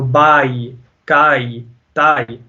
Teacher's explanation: The ya with the jazm makes it go down to e, a kind of an e sound. So you're going from ah to e. Okay, so instead of turning into an air, you turn into ai. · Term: huruf al-leen